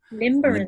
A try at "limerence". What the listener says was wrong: Limerence. No, with no B.